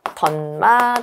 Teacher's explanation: 있는 시 옷을 대표음 고쳐 볼까요 그럼 디귿으로 바뀌겠죠 자 다시 디귿 하고 미음이 만나면서 비음화 일어나서 디귿이 니은으로 바뀌겠죠 던마 되겠죠 자 그러면 옷이 디귿으로 바뀐 거 음절의 끝소리 규칙이